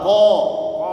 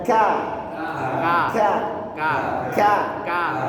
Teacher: itu Q ke depan sedikit itu baru masuk huruf k